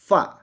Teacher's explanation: gigi atas menempel pada bibir kita yang bawah